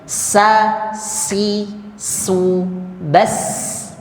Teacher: makhrajnya sama di ujung lidah tempelkan ke gusi keluarnya di antara gigi bagian depan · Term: huruf Sin